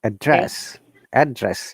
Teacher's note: our tone comes from up to down